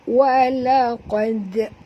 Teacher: Walaqad, huruf qaf tebal, okey. Huruf qaf tebal, jadi huruf dal ni lemah, jadi jangan tebal dengan huruf dal ni pula. Kita cuma tebal dengan huruf qaf, tapi dal ni kita lantunkan dia. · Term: qalqalah sughra